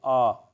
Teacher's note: अर्ध विवृत में जीभ नीचे रहेगा और बीच के जगह में रहेगा